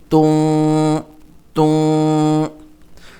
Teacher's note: نون کی آواز ہم ناک میں چھپاتے ہیں، تو اس طرح یہاں پر بھی تن نہیں بلکہ توں کہنا ہے۔ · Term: غنہ